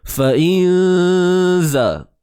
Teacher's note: Kerana ini adalah hukum ikhfa haqiqi. Sembunyikan sebutan nun mati itu. Jangan sebut nun tepat pada makhrajnya.